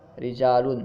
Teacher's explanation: اس میں جو را ہے ہم اسے باریک پڑھ رہے ہیں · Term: ترقیق